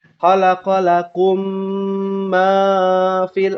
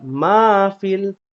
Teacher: tidak terlalu panjang, tidak terlalu pendek. 2 ketukan. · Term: 2 harokat